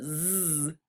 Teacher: But Z, you can hear the vibration in your mouth and in your vocal cords.